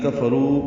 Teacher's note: کفرو میں کاف باریک ہے، را پر ہے، رو واو مدہ ہے